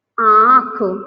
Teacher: अनुनासिक का जो उच्चारण है मुंह और नाक दोनों से होता है